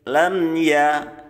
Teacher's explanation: mimnya itu bacaan idhar syafawi namanya ya, jelas di bibir. Ya, jelas di bibir, tapi tidak harus ditekan bacanya.